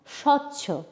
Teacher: শব্দের আদিতে যদি বফলা থাকে তাহলে সেই বফলার উচ্চারণ হয় না